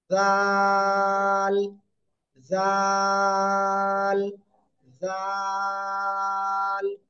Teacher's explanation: আগেরটা কি করেছি, আগেরটায় মোটা আওয়াজে করেছি, আর এবারটা চিকন আওয়াজে করব, নরম আওয়াজে করব। ঠিক আছে, জিব্বার আগা উপরে দুই দাঁতের আগায় লাগান সবাই, দেখি কে কে লাগাচ্ছে না। এবার নরম করে উচ্চারণ করতে হবে, তিন আলিফ টেনে,